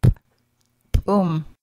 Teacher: Glottal P pronounced as a popped P